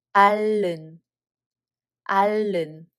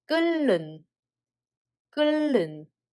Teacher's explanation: 히읗 받침 is removed and lu assimilates the following nu.